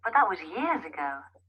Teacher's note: the emphasis here is on years.